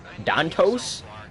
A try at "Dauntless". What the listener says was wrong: You said it like Dauntalas or some shit.